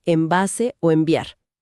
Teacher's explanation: El cerebro sabe que viene un sonido que requiere juntar los labios, la bilabiial, y como medida de eficiencia anticipa el movimiento. Convierte la N, que normalmente se hace con la lengua en el paladar, en una M, que requiere cerrar los labios.